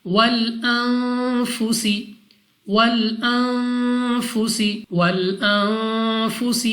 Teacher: نون ساکن کے بعد فا، حروف اخفا میں سے ہے، اخفا کا قاعدہ ہے، غنہ کر کے پڑھیں گے